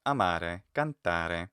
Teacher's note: And very frequently Italian words, in isolation in particular, but not exclusively, will have a higher musical pitch on the syllable which precedes what they call the tonic accent, and where the stress falls